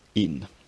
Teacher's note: It starts with a high front unrounded vowel and ends with n.